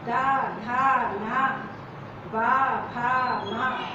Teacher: इनके उच्चारण में हमारे स्वर तंत्रों में घर्षण होता है, कंपन होता है। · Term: घोष